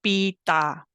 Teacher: this sound is made by closing your lips and then letting the air that has built up behind that closure Escape when you suddenly open them and that creates a popping noise